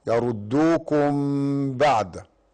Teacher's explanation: هنا يسمى إخفاء شفوي، والإخفاء الشفوي إذا كانت ميم ساكنة وجاء ده بعدها الباء فقط